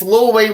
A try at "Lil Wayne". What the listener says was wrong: Oh, you sounds like you're saying Little.